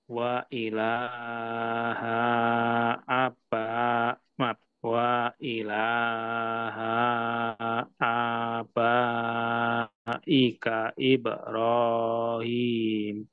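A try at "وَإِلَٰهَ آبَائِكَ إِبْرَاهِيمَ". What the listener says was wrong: nah ini h-nya Pak kebaca panjang ininya udah benar k-nya tapi h-nya jadi panjang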